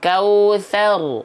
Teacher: ro sukunnya dibaca tebal